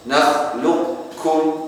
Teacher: qaf dulu terbaca sebagian dari sifatnya qaf, kemudian kaf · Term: idgham naqis